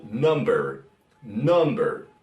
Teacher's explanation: La U que se convierte en un A más bajo que el español